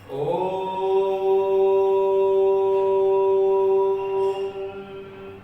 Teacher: ओ को मैंने काफी लंबे समय तक बोला है और मां को थोड़ा कम बोला है। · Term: प्लुत स्वर